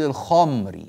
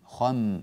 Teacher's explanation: بعض الناس يقول الخمري فيبقي الخاء على تفخيمها، هذا جيد، وينقل ينتقل إلى الميم مع تفخيمه الذي بقي في الخاء، فتصير الخاء مفخمة والميم أيضا مفخمة، وليس كذلك. ننتقل من خاء مفخمة إلى ميم مرققة. وطريقة ترقيق الميم إفراغ ما خلف الشفة العليا والسفلى من الهواء، يعني لا ننفخ خلف الشفة العليا والسفلى هواء.